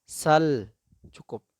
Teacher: Tidak boleh sal, itu keliru. Jadi kalau lam ketika sukun suaranya keluar tapi hanya sebentar saja.